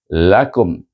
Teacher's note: kata kum itu dibaca dengan Iz syafawi kerana hukum mim mati menggunakan mim mati bunyinya lakum tutup bibir terus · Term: izhar syafawi